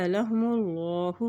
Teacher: अल्लाह के नाम से पहले पेश आ गया है तो अल्लाह का नाम यहाँ पर मोटा अदा किया जाएगा